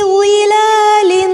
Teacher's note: ظا کو پر کریں گے، کھڑی حرکت کو ایک الف جتنا لمبا کیا جائے گا، تنوین کے بعد عین ہے، اظہار ہوگا.